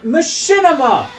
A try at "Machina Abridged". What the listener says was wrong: There's not machinima. There's no M after the... Also, it's Machina bridged. You know why? Because it's Machina in the game.